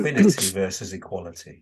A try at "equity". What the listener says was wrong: There's no N in it. Equity. EQITY. Equity. EQ.